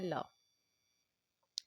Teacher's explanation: तो पार्श्विक व्यंजन है हमारा ल